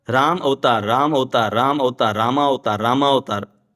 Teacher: राम और अवतार बाजू में करेंगे तो अ मिलकर आ हो जाएगा। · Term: संधि